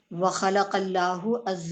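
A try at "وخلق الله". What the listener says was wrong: یہ خلق اللہ ہے. یس، اس کو ہا کو مارک کر لیں. یعنی وہ زبان پہ ہماری چڑھا ہوتا ہے نا خلق اللہ، تو وہ یہ مسٹیک ہو جاتی ہے.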